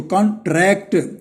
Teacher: तो ट्रैक्ट जो है इस पर जोर देंगे